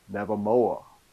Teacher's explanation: left off the concluding R sound and Nevermore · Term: Tidewater Virginia accent